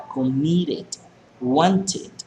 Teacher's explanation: cuando termina en T el verbo, la E de final se pronuncia completa